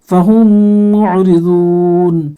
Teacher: فا کو نہیں کھینچنا، ہا کو میم میں ملا دیں گے، اس یہ میم ساکن ہے نا تو اگلے میم سے اس کو ملا دیں گے غنہ کے ساتھ، اور یہ عین یہ حلق سے نکال دیں گے